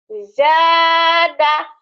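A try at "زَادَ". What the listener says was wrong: Zada. Jangan zadah. Jangan dahanya. Zada.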